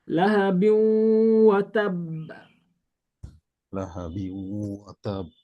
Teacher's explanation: ওয়াও আসলেই মিলাইতে হবে, এবং ওয়াও যেহেতু এটা গুন্নার সাথে, তাহলে গুন্না করতে হবে। তাহলে পড়তে হবে লাহাবিউ ওয়া তাব।